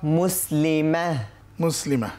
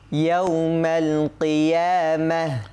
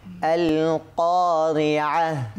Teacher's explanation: গোলতায় থামলে হা হয়ে যায়, মানে তা কিন্তু আর কি থাকে না, তা থাকে না, হয়ে যায় কি হা হা।